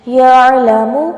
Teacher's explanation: یعلم یہاں پر عین پر جھٹکا نہیں دینا، یعلم کر کے نہیں پڑھنا، یعلم پڑھنا ہے.